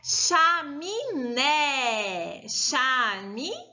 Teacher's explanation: O né é a sílaba mais forte dessa palavra.